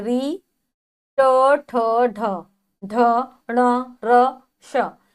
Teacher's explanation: मूर्धा यानी कि दांत का ऊपरी वाला भाग जब हमारी जीभ इसको स्पर्श करती है तो इन वर्णों का उच्चारण होता है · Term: मूर्धन्य